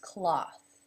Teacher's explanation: the vowel sound is the aw as in law and the th sound is unvoiced